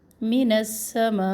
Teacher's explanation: مد جو ہے جوائنٹ مد ہے, جوڑا ہوا مد ہے تو اس کو ہم نے 3 الف کے برابر لمبا کرنا ہے